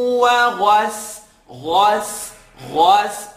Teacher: Ghain is heavy, sin is light.